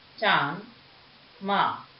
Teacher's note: इसका उच्चारण नाक और मुंह दोनों से होता है। इसका चिन्ह चंद्र बिंदु होता है, जैसे चांद, माँ। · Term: अनुनासिक